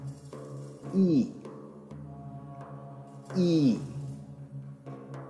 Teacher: the tongue is positioned close to the roof of the mouth forward in the mouth with the lips not rounded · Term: close front unrounded vowel